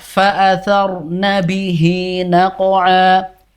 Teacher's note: Sehingga dia terjadi mat silah qasiroh. Panjangnya 2 harokat.